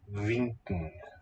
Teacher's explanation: There's an NK that's eng and then a stop, but the G will always merge into the nasal in all positions, is my feeling there.